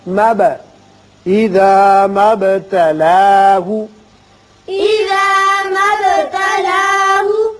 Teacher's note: با ساکن ہے، اس کی صفت قلقلہ ادا کریں گے، مد نہیں پڑھیں گے